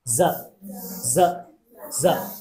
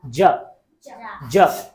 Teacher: একটা হচ্ছে za, এখানে একটা ভাইব্রেশন আছে za, za, za, আরেকটি হচ্ছে ja, ja, and there is no vibration.